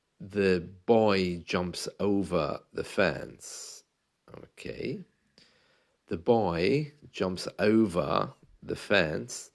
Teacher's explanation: my O is very pronounced, okay? It's a real circular sound. O is formed by pulling my mouth down and creating O. It's not O, okay?